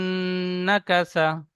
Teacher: পড়ে এসেছি তো নুন তাজদিদ মিম তাজদিদ গুন্না করা ওয়াজিব এখানে নুন তাজদিদ গুন্না করা ওয়াজিব এক আলিফ পরিমাণ নাকে তুলে গুন্না করে পড়ব